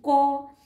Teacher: ক উচ্চারণ করতে গেলে আমরা অ এর উচ্চারণ করছি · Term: ব্যঞ্জন ধ্বনি